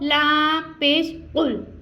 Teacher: कौफ हरूफ मुस्तालिया, इसको हमने पुर यानी मोटा अदा करना है